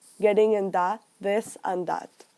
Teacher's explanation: people tend to pronounce the th sound like D or T